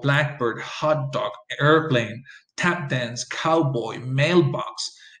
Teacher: it's always going to be stressed on the first element of the compound